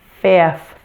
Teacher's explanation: to pronounce that f sound v now to finish the word you need to quickly and smoothly move from an F sound to a voiceless th